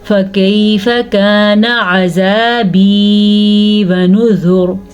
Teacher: فا کو لمبا نہیں کرنا، کانا نون کو لمبا نہیں کرنا